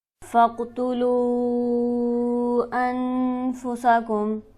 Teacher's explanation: قاف پر ہمارے پاس حرف قلقلہ موجود ہے، یہاں آواز اچھلتی ہوئی معلوم ہوگی. لام پر ہمارے پاس مد موجود ہے، اسے ہم کھینچیں گے 5 الف کے برابر.